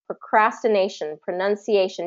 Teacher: nay is going to be stressed because it's right before the shun